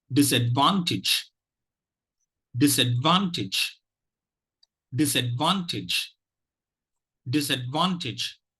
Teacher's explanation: the first and third syllables are stressed the third syllable is the prime minister syllable the first syllable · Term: primary stress